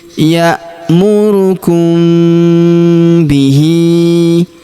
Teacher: kita panjangkan empat atau lima harakat karena di depan huruf hi terdapat tanda garis bacaan panjang empat atau lima harakat